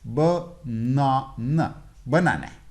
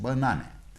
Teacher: the first and third syllables are unstressed and the middle syllable is stressed